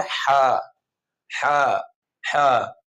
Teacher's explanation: ایک تو را کو وا کر دیتے ہیں، دوسرے ہا کو خا، خا نہیں کرنا